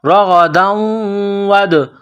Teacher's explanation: دال ساکن ہے تو یہاں پر قلقلہ کرنا ہے